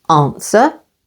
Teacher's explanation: answer stress on the first syllable answer